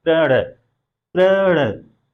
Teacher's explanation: जो प जो आया है अर्ध व्यंजन, उसके बाद जो र आया है उसके ऊपर बल दिया जा रहा है, प्रण, प्रण, र के ऊपर बलाघात हो रहा है। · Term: संयुक्त ध्वनि